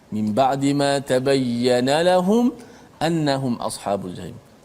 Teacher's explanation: kita kena jelaskan mati mim tu tanpa boleh kita memanjangkan gunnah kat situ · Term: izhar syafawi